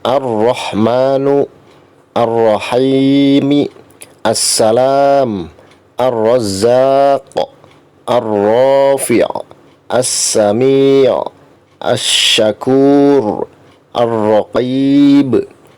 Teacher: Ini adalah contoh-contoh potongan ayat yang mengandung alif lam syamsiah. Jadi alif lam syamsiah itu huruf lamnya tidak dibaca atau tidak terdengar